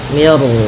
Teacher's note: Nah di sini namanya ro tafhim. R tafhim itu artinya ro yang kita baca dengan bacaan ro tebal.